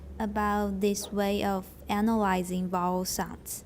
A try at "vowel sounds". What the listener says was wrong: vowel sounds. Yeah, good.